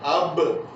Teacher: جب آپ کہتے ہیں اب تو ہونٹوں دونوں ملنے سے با ادا ہو رہی ہے، واضح ہے کہ یہیں سے ادا ہو رہی ہے۔